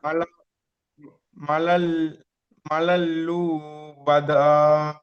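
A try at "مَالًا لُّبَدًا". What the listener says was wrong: কোনটা টান আছে দেখেন, মাটা টান আছে, তাহলে মাটা টানতে হবে।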